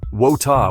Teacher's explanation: A Brit might say wota with a softer T.